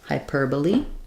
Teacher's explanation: So even though this looks like hyperbole, we're stressing on the per, so that changes how we pronounce it.